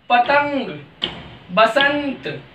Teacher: ये नाक से बोला जाता है, इसको अनुस्वार बोलते हैं क्योंकि ये नाक से बोला जाता है